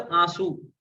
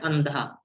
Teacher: अनुस्वार और अनु अनुनासिक, जिसको हम चंद्रबिंदु कहते हैं, उनमें बेसिक फर्क क्या आ जाता है कि ऐसे समझ सकते हो कि जो चंद्रबिंदु है वो लगभग 25% न है, जबकि अनुस्वार लगभग 50% न है, ठीक है। तो आप बोलते हो आंसू, तो उसमें न की हल्की सी ध्वनि आ रही है, लेकिन जब अपन बोल रहे हैं अंधा तो आधा न पूरा सुनाई दे रहा है